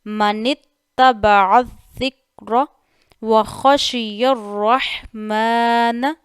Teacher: عین کو بھی خیال سے ادا کرنا ہے، اسے حمزہ نہیں بنانا ہے